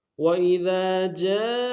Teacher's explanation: وَإِذَا میں ذال کے ساتھ الف مدہ ہے، ایک دال میں کھینچیں گے، دال کو باریک ادا کریں گے۔